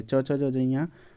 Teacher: च च ज जया यह तालू से बोला जाता है